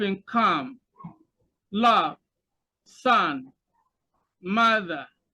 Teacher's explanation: next we have the central vowel sound ah as you have income love Sun mother